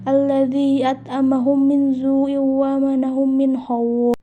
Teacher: suara diidgamkan secara sempurna tiga harakat dengan suara guna yang keluar dari pangkal hidung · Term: idgam mimi, idgham mimi